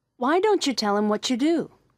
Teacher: the T and Y sounds combined to make a CH sound